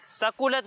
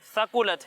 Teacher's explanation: सा में सीटी की आवाज़ नहीं आएगी